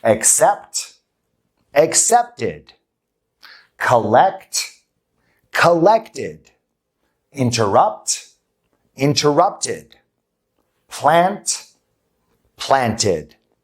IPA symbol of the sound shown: ɪd